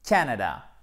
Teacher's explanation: Accent tonique sur la première syllabe.